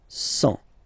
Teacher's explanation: Remember, final T not pronounced.